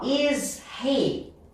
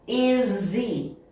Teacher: Ah, então o H é um som que ele gosta de sumir.